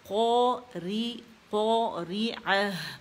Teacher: الف جو ہے یہ قاف کے ساتھ جو ہے یہ حرف مستعلیہ ہے، ٹھیک ہے، تو استعلیٰ کی وجہ سے زبان کی جڑ پر جا کے نرم تالو سے لگ جائے گی قاف